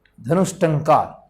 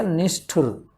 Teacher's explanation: ट चूंकि मूर्धन्य वर्ग से हैं तो ये मूर्धन्य से में बदलेगा विसर्ग